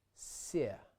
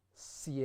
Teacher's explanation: we get se with a softened S and not sie, a hard S followed by ye